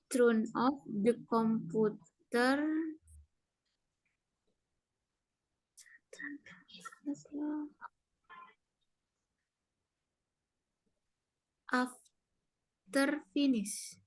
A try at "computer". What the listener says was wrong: Jadi komputer itu bacanya bukan komputer, tapi computer. Karena ada U ya. U itu dibacanya Y.